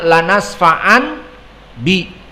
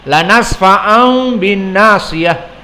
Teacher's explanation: maka dari nun berubah menjadi makhraj mim untuk mendekati ba. Ini alasannya kenapa diganti ke mim, untuk mendekati makhraj ba. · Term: iklab